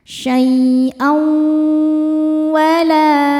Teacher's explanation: Cara bacanya tanwin dileburkan ke waw kemudian tahan. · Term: idgham bi gunnah